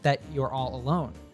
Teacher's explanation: the r from your gets linked to all and the L from all